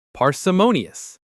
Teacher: The main stress is on that third syllable